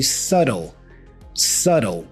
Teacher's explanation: we don't pronounce the B. The B here is silent.